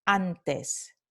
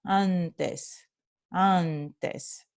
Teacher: It's letting the air come out of your nose as you're pronouncing that vowel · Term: Nasalizada